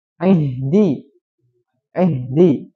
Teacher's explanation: mengganti huruf hamzah menjadi huruf Ain